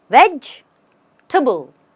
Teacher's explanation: You stress on veg and then go tibble.